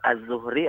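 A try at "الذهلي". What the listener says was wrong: Az-Zuhli. Dal ha lam ya. Bukan Az-Zuhri, tapi Az-Zuhli.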